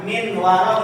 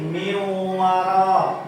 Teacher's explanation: Harusnya huruf nun dimasukkan ke dalam huruf wa